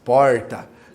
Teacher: Porta, com R retroflexo, né, que é com a ponta da língua para trás. Isso não é errado, tá?